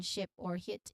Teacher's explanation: It's a relaxed and short i.